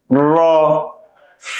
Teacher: জিহ্বার আগার পিঠ উপরের তালুর সঙ্গে লাগিয়ে উচ্চারণ করতে হয়।